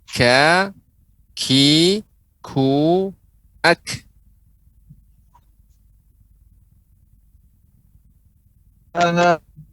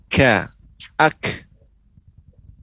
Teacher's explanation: huruf kaf dia mengeluarkan udara, ya, karena dia termasuk huruf yang hamas, dia mengeluarkan aliran udara juga